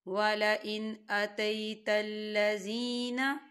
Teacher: حمزہ جو ہے حروف ہلکی کا ورڈ ہے، تو یہاں پر ہم اظہار کریں گے، نون ساکن کی آواز کو صرف ظاہر کریں گے، اسے بنا غننے کے پڑھیں گے۔